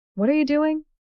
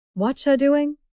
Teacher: Americans smash these words together to say whatcha.